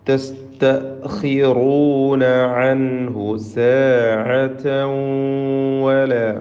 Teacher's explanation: അൻഹു എന്നതിലെ സാക്കിനായ നൂനിനെ ഇൽഹാർ ഹൽക്കി നൽകി മണിക്കാതെ വെളിവാക്കേണ്ടതാണ്. സാഅതൻ വല. തൻവീനിനെ ശേഷമുള്ള വാവിൽ ലയിപ്പിച്ച് മണിക്കണം.